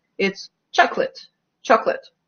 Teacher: when it's not stressed, it's not even schwa. We just lose that syllable completely